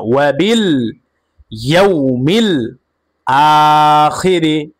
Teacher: হামজার উপরে খারা জবর আসার কারণে এক আলিফ পরিমাণ টান হবে মাদ্দে বদল